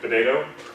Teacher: if you tap the T's in British, like potato, that's a very casual, like very low speaking in British